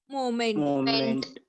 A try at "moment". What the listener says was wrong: I heard a pronunciation like movement. Moment. Moment. We have to say simply as a moment, not movement. Movement. That pronunciation should not be there. A moment.